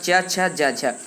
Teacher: च छ ज झ, ये आपके च वर्ग हैं और सारी च वर्ग की ध्वनि का तालव्य होती हैं, इस बात आपको याद रख लेना है।